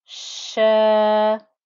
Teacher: Inna, there's the fatha on top. Sha, the sheen with the fatha and the alif gives me a 2-count stretch.